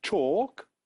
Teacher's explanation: in talk the letter L is written but not pronounced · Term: silent letters